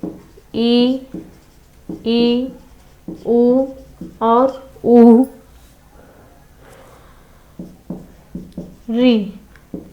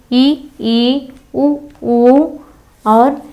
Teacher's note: जिन स्वरों के उच्चारण में जीभ का व्यवहृत भाग, जीभ का व्यवहृत भाग जब ऊपर तालु के काफी पास चला जाता है या जिनके उच्चारण में मुख लगभग बंद रहता है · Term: समृद्ध स्वर